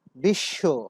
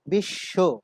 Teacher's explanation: বিশ্ব, এখানে বফলা যুক্ত হয়েছে শব্দের শেষে, তালব্য শয়ের শেষে বফলা যুক্ত হয়েছে, ফলে এই শব্দের উচ্চারণে সংযুক্ত বর্ণটি, বফলার সাথে যে বর্ণটি যুক্ত আছে তালব্য শ, সেই বর্ণটি দ্বিত্ব হয়ে গিয়েছে। বফলার নিজস্ব কোনো উচ্চারণ নেই, কিন্তু সে যার সাথে বসেছে সেই বর্ণটি বা ধ্বনিটি দ্বিত্ব হয়েছে।